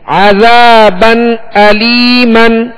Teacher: الف مدہ ہے، 1 الف کی مقدار کھینچ کر ادا کریں گے